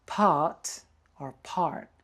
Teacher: we got the open mouth for Australian English